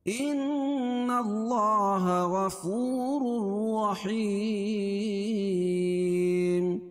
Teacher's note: یا مدہ اس کو ایک الف کے برابر کھینچ کے پڑھیں گے. اور وقف کی صورت میں یہ مد عارض وقفی ہوگا، اس میں طول توسط قصر تینوں جائز.